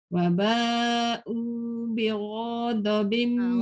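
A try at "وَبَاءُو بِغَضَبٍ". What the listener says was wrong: Ra tak boleh panjang. Ra jangan panjang.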